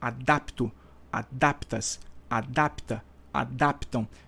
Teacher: a vogal tônica é o A tá o a da sílaba dap está dentro do radical